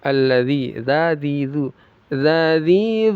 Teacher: makhrajnya ujung lidah yang menempel ke ujung gigi seri atas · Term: dal